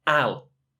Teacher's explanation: look at is I and will which contracts into Isle but often in conversation we contract even further than I'll and we simply just say Al